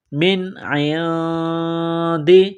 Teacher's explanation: نون ساکن کے بعد عین ہے، حروف حلقی ہے تو نون ساکن پر غنہ نہیں کریں گے